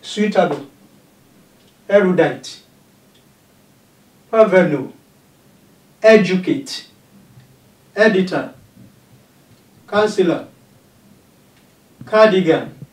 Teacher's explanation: those words that contain three syllables with the first syllable stressed